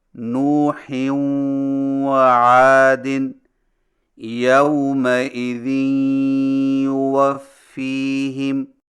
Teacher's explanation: اگر منون کے بعد مشدد حرف واو یا یا ہوں تو ناک میں آواز کو کھینچ کر پڑھیں گے